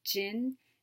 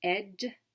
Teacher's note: the affricate voiced sound j, as in the beginning of gin and the end sound of edge